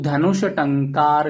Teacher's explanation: धनु तो विसर्ग प्लस से पहले प्लस के बाद ट मिला, तो इस स्थिति में ट मिलने के कारण इस विसर्ग का मूर्धन्य श हो जाएगा, ये श, तो धनुष टंकार शब्द बनेगा।